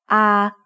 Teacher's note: sara ah is a long vowel that makes the sound ah like the a in father